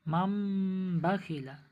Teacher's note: তানবিন অথবা নুন সাকিনের পরে যদি বা আসে তাহলে তানবিন নুন সাকিনের আওয়াজকে মিমের দ্বারা পরিবর্তন করে গুণনা করে এক আলিফ গুণনা করে পড়তে হয়, একে ইকলাব বলে।